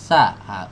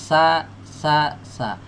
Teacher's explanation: Kalau huruf sa, ujung lidahnya bertumpu ke ujung gigi seri atas.